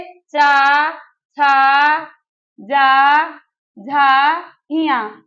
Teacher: हम कहां से इसका उच्चारण होगा ताल से ताल यानी कि हमारी जिव्या का अग्र भाग तालू में जो हमारे यह मुख का ऊपरी भाग है तो तालू में स्पर्श करेगा